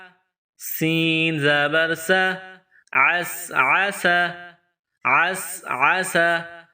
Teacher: ادا کریں گے، عین کو پڑھیں گے، اس کے بعد سین، سین میں سیٹی کی آواز پیدا کریں گے، سین کو پتلا پڑھیں گے